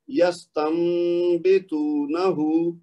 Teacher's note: نون کی آواز میں نے نہیں پڑھی بلکہ اس کی جگہ اس کو غنہ کرتے ہوئے میم میں بدل دی ہے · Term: اقلاب